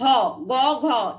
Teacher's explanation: প্রতিবর্গের তৃতীয় চতুর্থ ধ্বনি হচ্ছে ঘোষ ধ্বনি, মানে এই সময় কণ্ঠে কিন্তু একটা অনুরণন হয়